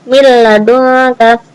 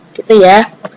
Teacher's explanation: Nun sukunnya dimasukkan ke huruf lam.